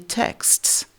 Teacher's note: ce n'est pas très simple à prononcer pour un francophone parce que vous avez en réalité quatre consonnes finales au mot